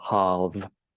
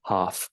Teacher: you need to use your voice for that final 'v' sound. 'Halve' not 'half'